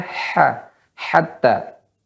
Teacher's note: Maka di sini ha tipis, ya, jangan dibesarkan ha. Maka ha, hatta.